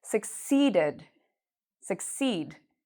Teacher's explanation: So when you pronounce this word, make sure that you pronounce the seed part loud and long. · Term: stress